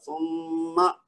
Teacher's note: اچھا, اس میں جو میم مشدد ہے اصل میں تو بات ہم کر رہے ہیں اس کی, تو وہ کیا ہے, ہم نے اس کو سما نہیں کہنا. ایک تو سین کی آواز نہیں نکلے, صاد کی آواز نہ نکلے, بلکہ سا جو ہم نے مخرج اور صفت پڑھی تھی نا کہ سا کیسے ادا کرنا ہے, تو اس کو سا پڑھنا ہے.